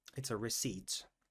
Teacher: As you see, there is no P sound.